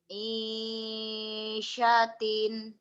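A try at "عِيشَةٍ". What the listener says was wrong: Isyatin. Jangan panjang. I-nya doang.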